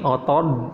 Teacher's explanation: perpaduan antara ujung lidah dan gusi atas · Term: apiko alveolar